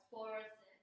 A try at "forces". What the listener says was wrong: Yeah, so not forces, but forces. Yeah, we just take that R out in this case.